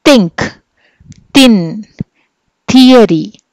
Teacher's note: సో వీటిని మనము dental అని చెప్పి అంటాం. సో డెంటల్ అనగానే the tongue touches the teeth